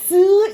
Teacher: 파찰음은 즈를 발음하기 전에 즈 나오기 전에 한번 막히잖아요. 그쵸? 막히는데 터지는 건 아니에요.